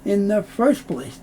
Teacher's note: Often the T sound isn't made, so you'll hear in the first place.